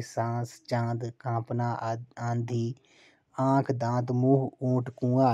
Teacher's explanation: वायु नाक और मुंह से एक साथ बाहर निकलती है, तो उस वर्ण के ऊपर चंद्र बिंदु लगाया जाता है, उन्हें इसे अनुनासिक कहा जाता है।